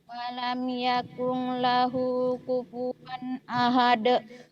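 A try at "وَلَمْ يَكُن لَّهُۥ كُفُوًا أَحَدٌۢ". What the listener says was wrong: Jangan yakung, yakul ya. Nih, walam. Walam. Yakung, jangan yakung, yakung, yakung, jangan yakung. Yakul, yakul tuh yakul, yakul, yakul.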